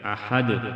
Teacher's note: دال ساکن ہوگا تو قلقلہ کریں گے